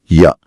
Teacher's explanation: ம கீழ் உதடு மேல் வாய்ப்பல்லை பொருந்துவதால் பிறக்கும் எழுத்து >> வ >> நாக்கின் அடிப்பகுதி மேல்வாயின் அடிப்பகுதியை பொருந்துவதால் பிறக்கும் எழுத்து